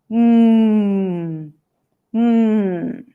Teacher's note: So the manner is a nasal stop, sounds that are released through the nose. So if we block the air in the lips, block the air and release the sound through the nose, then we get an M sound.